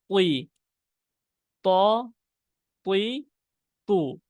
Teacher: মোটা হরফ বিধায় জের হোক জবর হোক পেশ হোক সর্ব অবস্থায় হরফটা আমাদের মোটা করতে হবে